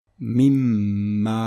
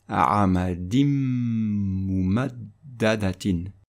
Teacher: prononcer les 2 mims ou les 2 nun avec un hunna, un nasillement prolongé pendant 2 temps.